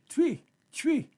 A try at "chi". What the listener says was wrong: The T is silent. Chi.